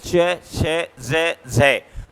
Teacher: स्पर्श ही होता है लेकिन अपेक्षाकृत स्पर्श की तुलना में बाद वाला भाग संघर्षी हो जाता है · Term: स्पर्श संघर्षी व्यंजन